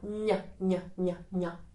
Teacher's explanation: Actually, I touch a spot that is quite close to my upper teeth with the middle of my tongue. N, N, N. It's a place which is like about 1 centimeter from the teeth, up there or back there. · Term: soft N